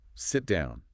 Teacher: The volume and the intensity just spike